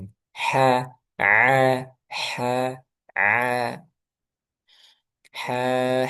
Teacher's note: kalau ha tengah tenggorokan wasatul halq